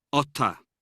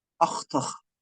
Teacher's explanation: the CH at the end of the word might drop out in Ulster. It's pronounced in Connacht, and the accent goes a little bit more to the last syllable in Munster.